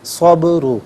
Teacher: را پر پیش را کو پر کر کے پڑھیں گے